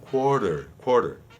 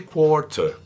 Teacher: Os R somem. E é o true T, não é mais esse flap T.